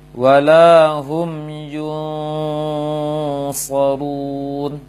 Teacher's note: Ujung lisan dengan gusi atas. Maka ketika nun sukun bertemu dengan shad, ujung lisan tidak ditempelkan ke sana lagi, diturunkan ujung lisannya. Kemudian dia diarahkan ke makhraj shad. · Karena dia mengarah ke makhraj shad, maka ikuti ketebalan shad. Shad sifatnya tebal, maka dengung nun sukun bertemu dengan shad juga mengikuti tebal, karena dia mengarah ke makhraj huruf yang dijumpai setelahnya.